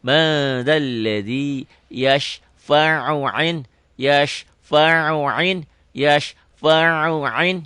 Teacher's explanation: Kadang-kadang yasfa'u indahu dibacanya kayak bukan ain, jadi dibaca hamzah. Padahal ini ain dua-duanya ya.